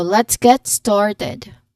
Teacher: T should smoothly glide with letter G sound of the get, and then the emphasis is on started.